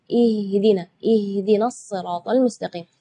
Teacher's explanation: Sedangkan makhraj huruf H itu adalah dari tenggorokan. Jadi keluarnya tipis karena H itu termasuk huruf di antara 28 huruf hijaiyah yang paling lemah adalah huruf H.